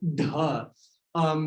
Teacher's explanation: the retroflex, the voiced retroflex aspirate